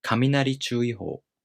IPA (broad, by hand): kaminarichuuiꜜhou